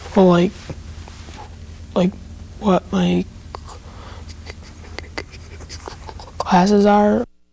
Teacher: block on the initial K sound in the word classes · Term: Blocks